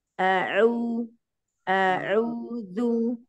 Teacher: hamzahnya masih agak terpengaruh dengan ain ya